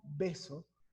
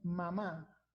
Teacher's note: En el caso anterior, bilabial, cuando decimos beso, fíjense cómo B sale juntando los dos labios